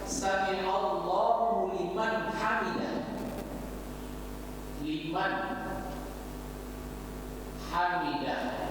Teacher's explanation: Nun mati atau nun sukun bertemu dengan huruf ha. Liman, maka bacanya jelas nun sukunnya. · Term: izhar